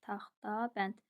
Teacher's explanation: Burda D T-ya keçir. T da D-ya keçir.